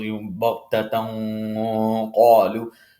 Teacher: It's not technically an elongation, it's nasalization, but we have to hold that gunna, that nasalization in our nose a little bit. And when we're holding it, we're going to hold that nasalization with the characteristic of the letter that is immediately after that nasalization.